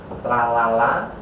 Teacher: ujung lidah diwakili la. Jadi kalau kita ngomong la la la, pakai ujung lidah.